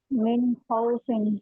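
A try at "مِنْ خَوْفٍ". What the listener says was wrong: इसके बाद नहीं, थोड़ा वक्त दीजिए, मिन खौफिन, मिन मिन, थोड़ा तवस्सुत है ना, थोड़ा वक्त तो वक्त देना है ना, जल्दी ना खींच के, मिन खौफिन, ओके।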